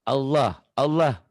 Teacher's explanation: kalau barisnya di atas berarti membaca lafad Allahnya tebal tafkhim